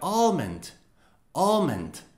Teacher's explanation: the american pronunciation includes the l very very slightly